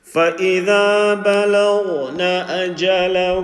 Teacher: Ghain full mouth, Lam empty mouth